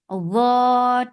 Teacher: Dha will get sifa of rakhawa. And rakhawa is flow of sound. Dha 2 counts long.